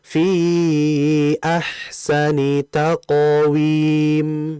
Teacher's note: Jadi hati-hati dalam mengucapkan huruf qof ya. Karena bukan hanya kita fokus pada pantulan saja, namun kita juga harus fokus pada ketebalan huruf qof